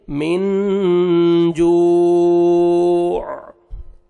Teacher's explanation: stop کریں گے، آیت کمپلیٹ ہو رہی ہے، وقف کی صورت میں عین ساکن ہو جائے گا تو لاسٹ میں عین کا ساؤنڈ آنا چاہیے